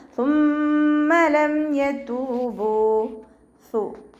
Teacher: സുമ്മ ലം യതൂബു, സ ഉച്ചരിക്കുമ്പോൾ ലൈറ്റാക്കിയിട്ട് ഉച്ചരിക്കാൻ ശ്രദ്ധിക്കുക കേട്ടോ. നമ്മുടെ പല്ലിൻ്റെ ഇടയിലൂടെ കുറച്ച് എയർ പുറത്തോട്ട് പോകണ സൗണ്ടിൽ ഉച്ചരിക്കുക. സുമ്മ, മീമിന് ശബ്ദ വന്നു, നല്ലോണം മണിച്ചു കൊടുക്കുക.